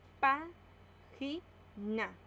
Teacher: La mayor fuerza de voz está en la antepenúltima sílaba.